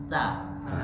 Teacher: Kalau ta terlalu deres jadinya seperti huruf sa. Desis huruf ta lebih minim daripada huruf sa.